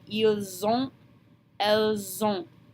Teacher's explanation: That liaison forms that Z sound in the middle, and that's going to be extremely important.